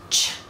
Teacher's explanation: sounds so you're combining stopping and then um friction so there's ch which is actually made out of T and Sh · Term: combination sounds